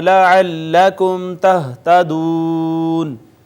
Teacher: میم ساکن کے بعد با میم نہیں، یہ اظہار شفوی